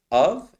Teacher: Of, it's one of the weirdest words in English that even though you see an F, it's actually a V pronunciation